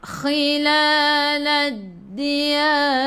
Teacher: Sebelum ra ada alif kena baca tebal tafkhim. Lidah naik ke atas, lidah kau naik ke atas, lidah diangkat ke atas.